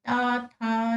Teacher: दंत जिनका उच्चारण दंत की सहायता से होता है